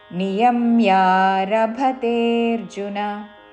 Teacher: రభ మహాప్రాణాక్షము భ, నియమ్యారభతేర్జున చివరిలో నా హ్రస్వము